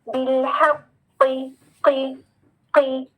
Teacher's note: ہا کو موٹا نہیں کرنا, ہا مرقق اور قوف مفخم